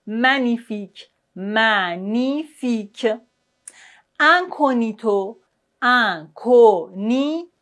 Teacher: Vous voyez, on ne prononce pas le G.